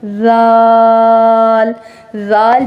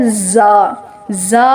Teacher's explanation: زال ادا کرتے ہوئے زا سے بچیں گے، زا کی آواز سے بچیں گے اور سیٹی کی آواز نہیں آئے گی